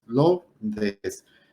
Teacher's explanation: no son 3 sílabas, son 2 sílabas, Lourdes, porque la O y la U es un diptongo